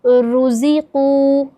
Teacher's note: سب سے پہلے ایک بہت آسان اگزامپل ہے، جیسے کہ رو پیش رو، زا زیر زی، روزی، قوف واو پیش قو، روزی قو۔ رو کے اوپر پیش ہے، رو پر یعنی موٹا کر کے پڑھا جائے گا